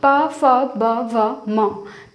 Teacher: इनके उच्चारण में हमारे होंठ सबसे ज़्यादा क्रिया कर रहे हैं, ऊपर नीचे से ऊपर की ओर, ठीक है। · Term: ओष्ठ्य